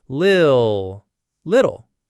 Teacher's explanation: So you have a light L and the dark L in the same word.